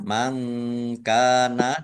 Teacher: Mangkana nun sukun bertemu dengan huruf kaf, bacaan ikhfa, dibaca samar-samar.